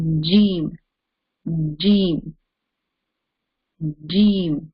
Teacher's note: the middle of the tongue is touching the roof of the mouth right opposite of the middle part of our tongue that part is touching the roof of the mouth very simple